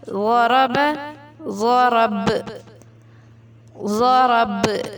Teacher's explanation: با پہ کلکلا ہوگا